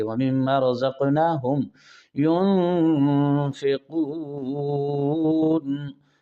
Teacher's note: یون کی نون پر اخفا مع الغنہ کیا، نون ساکن تنوین کے بعد اخفا کے 15 حرفوں میں سے فا آ رہا ہے، اور قون میں مد عارض وقفی ہے۔